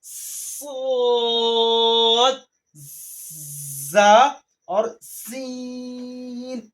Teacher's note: यह हुरूफ सफीरिया यानी इसकी सीटी की तरह आवाज आती है